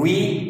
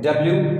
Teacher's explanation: जब वी pronounce करते हैं वी स्ट्रेच होते हैं लिप्स डब्ल्यू रोल होते हैं